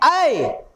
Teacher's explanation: ऐ कंठ और तालु, तो कंठ तालु